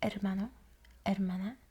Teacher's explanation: we want to make sure we trip the R a little bit. And by trip, I mean just a little bit behind the teeth.